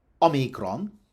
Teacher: Omicron is stressed on the first syllable.